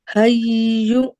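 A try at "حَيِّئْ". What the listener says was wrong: کسرہ پڑھیں نا، حجی. جی कसरा पढ़ें, दोबारा पढ़ें।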